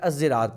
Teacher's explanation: اور بعض جو ہیں وہ اس کو زا کے اشمام کر کے الزراط پڑھتے ہیں